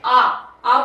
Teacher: आ बोल रहे हो तो बिल्कुल जीभ के पीछे प्रेशर पड़ रहा है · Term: पश्च